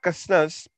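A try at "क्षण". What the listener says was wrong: Shanas, Prabhu, K is silent here. It's called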